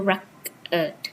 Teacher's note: Stress falls on the first syllable